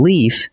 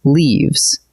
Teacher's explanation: where the F softens into a V